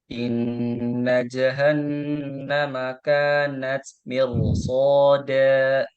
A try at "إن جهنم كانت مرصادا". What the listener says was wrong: Ya, fathahnya bukan e, tapi a. Ja, ha, a. Jahannam kanat mirsada.